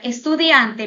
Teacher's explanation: en la palabra estudiante vamos a observar que en este caso dian es la sílaba tónica es donde está la mayor fuerza de voz